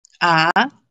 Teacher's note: Second tone goes, it's a rising tone